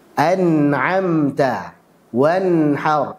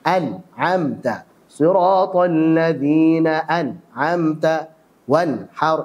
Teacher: menghilangkan sifat tawassut saat sukun sehingga aliran suaranya terputus